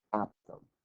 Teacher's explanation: with the stress on the first syllable not the second